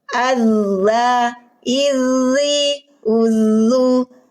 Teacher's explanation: huruf Zal ujung lidah menyentuh ujung gigi seri atas ujung lidah kita pinggirnya Rul lisan keluarkan sedikit hati-hati jangan berdesis